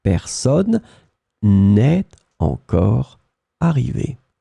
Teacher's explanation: Then you don't forget the ne, of course you drop the e because you've got a vowel after